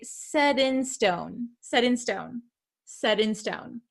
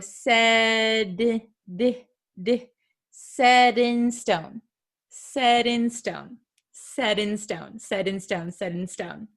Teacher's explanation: sometimes it is something called a flap T it sounds like a soft D sound